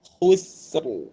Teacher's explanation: Kita tarik balik, khusr. Kemudian ra ditebalkan ketika waqaf. Sebab apa? Sebelum ra ada sin yang berbaris sukun dan sebelum sin ada ha yang berbaris di hadapan.